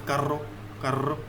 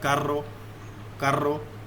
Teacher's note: You need to move your tongues toward upper side of your mouth and then vibrate your tongue to make this sound carro, carro. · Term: rolling R